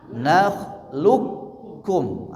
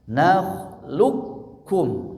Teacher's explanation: Masuk qafnya ke huruf kaf. Maka seperti kita membaca huruf kaf bertasydid saja. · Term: Idgham sogir